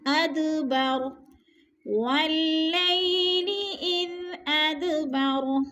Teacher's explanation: اد کو ہلا کے پڑھنا ہے کیونکہ یہ دال حروف قلقلہ میں سے ہے اور ساکن ہے، اس لیے ہم نے اس کو ہلا کر پڑھنا ہے۔